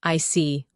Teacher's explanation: your tone drops slightly to show calmness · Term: falling tone